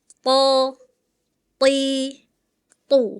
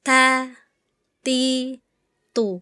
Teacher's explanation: ta dan tho memiliki makhraj yang sama, tetapi memiliki kualitas yang berbeda. · To ketika kasroh tadi kedengarannya seperti ta, hati-hati ta dengan to sama makhrajnya di situ juga, cuma punya sifat yang beda. Kalau to isti'la, naik pangkal lidahnya jadi dia tebal. Kalau ta dia pangkal lidahnya terhampar, turun.